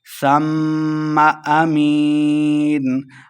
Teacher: سا کو نرمی کے ساتھ پڑھنا ہے اور میم مشدد ہے، سا کو میم کے ساتھ ملا کے پڑھیں گے اور میم پہ غنہ کرنا ہے